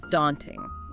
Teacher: In American English, it's often a wider A sound, like in father.